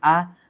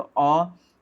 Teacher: आ में थोड़ा सा समय ज़्यादा लग रहा है, अ में क्या हो रहा है कि समय कम लग रहा है। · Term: दीर्घ स्वर